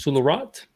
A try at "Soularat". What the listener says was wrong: I thought he was French. The T should be silent.